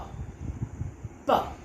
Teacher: I first brought my lips together, they touch each other, and then they make a firm closure. Then suddenly what I do, I release the air which is compressed behind my lips. · pa is a voiceless bilabial stop.